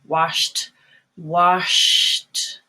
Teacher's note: you have a stop sound just at the very end there